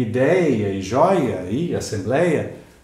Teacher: Vejam que em ideia e joia e assembleia nós temos o famoso iode, ou seja, dois ditongos. É uma vogal, uma semivogal, a semivogal se repete na pronúncia e outra vogal.